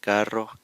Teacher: If the letter R, if there is a double R within the word, then it will also get trilled or rolled